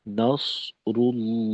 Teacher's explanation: সদকে আর একটু মোটা করার চেষ্টা করা, যাতে করে নস যেন সিনের থেকে বিষয়টা পূর্ণ আলাদা হয়ে যায়